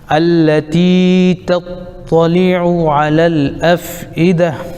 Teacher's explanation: یہ تا گولتا ہے ہا ساکن بن جائے گی آیت کی وجہ سے